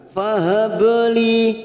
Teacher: ba sukun qalqalah sugro kita pantulkan.